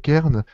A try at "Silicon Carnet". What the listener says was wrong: la prononciation, ce n'est pas Silicon Kern, mais bien Silicon Carnet.